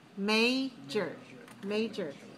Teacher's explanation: we have to stress on the first syllable. So we have syllable stress code 2-1.